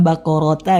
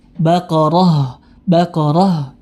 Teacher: ketika dia berhenti atau waakaf maka tidak berlaku yang namanya Mad Iwat padanya jadi berubah menjadi huruf ha yang mati